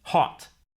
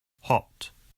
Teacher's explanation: American o sound is an unrounded vowel a while the British o sound is rounded